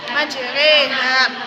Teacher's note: imalah, memberikan fathah ke kasroh atau memberikan alif ke arah ya